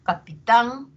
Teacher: tan va a tener un tono más alto y va a tener mayor duración y va a tener mayor intensidad no que son las propiedades de la sílaba tónica eh se